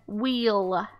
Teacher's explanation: w in there so we know it's wh and then wheel we hear that long e and that ending l